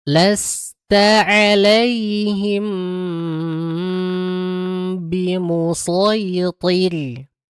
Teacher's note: Ingat rnya tipis ya, enggak tebal. Walaupun sebelumnya ada huruf tebal, tapi dalam kondisi ini karena dia thnya itu sebelumnya kasrah maka ditipiskan.